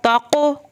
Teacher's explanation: अब ये काफ पतला पढ़ना है, इसको हिलाना भी नहीं है